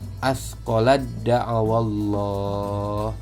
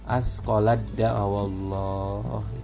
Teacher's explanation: Ta bertemu dal, misalnya asqolad da'awallah, maka taknya nggak dibaca ya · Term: idgham mutajanisain